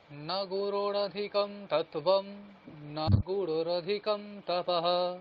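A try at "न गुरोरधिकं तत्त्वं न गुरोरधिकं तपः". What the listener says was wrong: এবার এবার কি ভুল করলেন, এবার রয় ওকারটাকে আপনি টানলেন না, নগুরো ওকারটাকে টানতে হবে।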